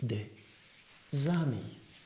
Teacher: The S of de will move to ami, and it makes des amis. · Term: liaison